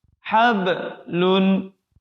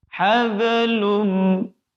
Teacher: Qalqalah lagi. Nah, qalqalah di tengah huruf ba sukun itu tidak boleh putus. Jangan sampai kita membacanya putus.